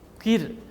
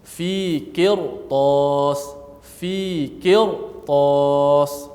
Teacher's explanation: oleh kerana sebab huruf selepas daripada ra ada huruf yang isti'la, maka kita baca dengan tebal. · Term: dibaca tebal